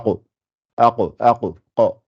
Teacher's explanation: Ça fait af, af, af. Alors que le qa, c'est le fond de la gorge, le fond de la langue, avec vraiment au fond. Voilà. La partie arrière de la langue, ça fait aqo, aqo, aqo, qa, qa.